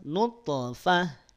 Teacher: Kadar pantulannya dia lemah alias sugra, tengah kalimat.